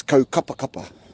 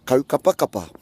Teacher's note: all your vowels in that place name are all short. There's no macrons, there's no stressed vowels, so they're all short.